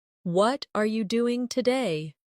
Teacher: the stress usually falls on what and doing